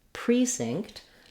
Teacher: Then lastly, we can also have the stress on the first syllable in these types of words, which we have in the word precinct. The pre is stressed. It has letter E, has a clear E vowel. There's our tense vowel.